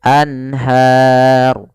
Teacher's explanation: izhar halqi yaitu adanya nun sukun bertemu dengan huruf ha yaitu suara nunnya harus jelas tidak boleh ditahan · suara nunnya harus jelas, tidak boleh ditahan. Anhar tidak, tapi langsung saja anhar.